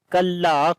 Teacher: Kaf we read in light sound. La we long due to alif madda.